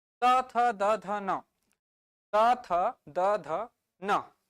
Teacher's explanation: जभी भी त का उच्चारण कर रहे हो थ का उच्चारण कर रहे हो जीभ को देखो दांत को टच कर रहा है